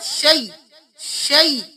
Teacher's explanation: یہاں پہ بہت سے لوگ شیئن پڑھتے ہیں، لیکن یہاں پہ ہم نے یا لین پڑھنا ہے